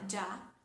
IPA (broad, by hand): dʒ